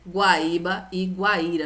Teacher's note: esse U aqui é uma semivogal e o a é a minha vogal dessa forma eu tenho ditongo que é crescente por isso que nós iremos acentuar essas palavras Deu para entender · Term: ditongo crescente